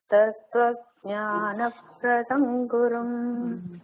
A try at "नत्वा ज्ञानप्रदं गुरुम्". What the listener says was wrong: नत्वा ज्ञानप्रदं गुरुं It is natva, having saluted, not tattva.